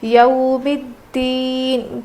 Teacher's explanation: اب یہ یو نہیں ہے بلکہ یو ہے، حروف لین ہے نا، اس لیے ہم نرم آواز کے ساتھ جلدی ادا کر کے پڑھیں گے. یو ہوتا ہے، یا واو زبر یو نہیں بلکہ یا واو زبر یو ہوتا ہے.